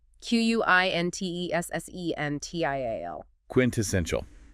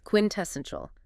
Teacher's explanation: 4 syllables. Stress on the third.